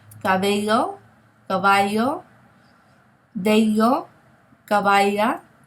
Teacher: the double L in Spanish is pronounced as a Y, okay, the Y sound. We don't pronounce it as the English double L.